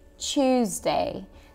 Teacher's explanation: В британском, нигерийском и австралийском «т» и «у», да, вот это вот «to», слились воедино и создали звук «ч»